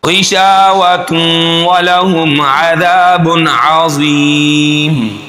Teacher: ग़ैन को मोटा पढ़ेंगे, शा को एक अलिफ के बराबर खींचेंगे। तू व तू पे यहाँ पर इदगाम हो रहा है।